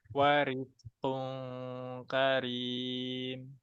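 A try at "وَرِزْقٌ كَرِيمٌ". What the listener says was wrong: Zainnya jelaskan warizqum karim.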